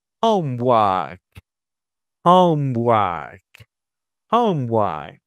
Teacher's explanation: One of the characteristics of pronouncing vowels plus the R sound in British English is that you don't pronounce the R, but you extend the vowel.